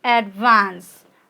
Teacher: of you know advance we pronounce it as advance right advance okay your stress is on vance okay that is second syllable